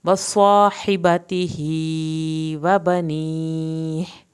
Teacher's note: صاد کو ہم نے پر کر کے بھی پڑھا ، حبتہ، اس کو بھی کھڑی زیر کی وجہ سے کھینچا